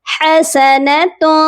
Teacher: حسنۃ، یہاں پر جو تنوین ہے، تنوین کی آواز کو ناک میں چھپا کر پڑھیں گے